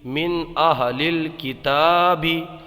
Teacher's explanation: یہاں پر نون ساکن میں اظہار ہوگا اس لیے کہ نون ساکن کے بعد حمزہ ہے، اور قاعدہ یہ ہے اظہار کا نون ساکن اور تنوین کے بعد حروف حلقی میں سے کوئی حرف آ جائے تو اظہار ہوتا ہے، یعنی غنہ نہیں ہوتا ہے.